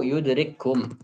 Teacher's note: Karena di situ kita berikan hams pada kaf yang pertama. Kalau sudah kita idghamkan, tidak ada lagi hams. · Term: idghamul mutamathilain